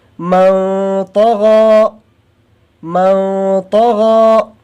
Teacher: یہ طا کو موٹا کر کے پڑھتے ہیں، تو اخفا جو کریں گے اس کو بھی ہم تھوڑا پر کر کے اخفا کریں گے